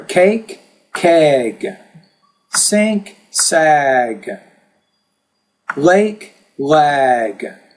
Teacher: because the G is a voice consonant and it occurs at the end of the word, the vowel before it will be longer. So vowel sounds are always longer when they're preceded by when they're followed by voice consonants.